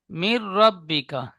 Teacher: মিমের নিচে জের এসেছে, জেরটি হারাকাত, হারাকাত তাড়াতাড়ি পড়তে হয়, টান দেওয়া নিষেধ। নুন সাকিনের পরে র এসেছে, তাই নুন সাকিনের আওয়াজকে বিনা গুণনায় মিলিয়ে পড়ব। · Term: ঈদগামে তাম